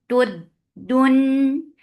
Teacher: Dal will get sif of shidda. There is no flow of sound.